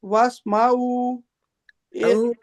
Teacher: میم کو کھینچنا نہیں، واسمعوا، آئین کو کھینچیں